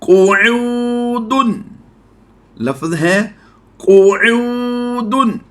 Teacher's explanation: याद रहे काफ की अदायगी भी पूरी करनी है और ऐन को बिल्कुल वाज़े करके पढ़ेंगे, हमज़ा और ऐन में वाज़े फ़र्क होना चाहिए